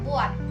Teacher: jika berada di akhir kata fonem T, tidak diucapkan lepas. Bibir kita masih tetap rapat tertutup saat mengucapkan bunyi, misal pada kata buat.